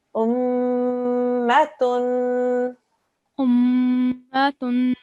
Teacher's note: Just remember that when it's a mim mushaddad, there has to be a 2-second nasal sound